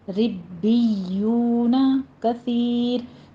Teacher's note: سا کو نرمی سے پڑھتے ہوئے آگے یا مدہ ہے